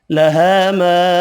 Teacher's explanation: 2 الف مدہ ہیں، دونوں کو 1 الف کی مقدار میں کھینچ کر پڑھیں گے۔